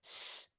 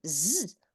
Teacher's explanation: In this case, your tip goes back behind your bottom teeth, but this part of, if this is your tongue, this part of your tongue touches the roof of the mouth, and your tip is behind your bottom teeth. So you have s unvoiced and z voice.